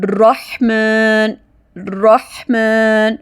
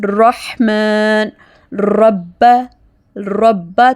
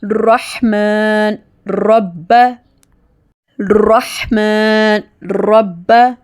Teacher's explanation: را موٹا تفخیم پڑھنے کے قواعد آج ہم جانیں گے کہ جب را پر زبر ہو تو ہم را کو ہیوی ساؤنڈ میں پڑھیں گے، جیسے رحمن رحمن، را میں زبان کی نوک اوپر دانتوں کے مسوڑوں کے ساتھ لگتی ہے، رحمن رب ربا تھوڑی سی وائبریشن ہوتی ہے اس کو ہیوی پڑھتے ہوئے، رحمن رب رحمن رب۔